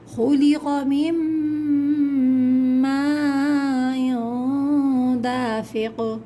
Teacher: یہاں میم پہ میم کے اوپر مد ہے، کھینچیں گے